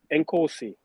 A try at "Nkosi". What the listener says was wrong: you've pronounced it quite well, actually. But you're supposed to have a click.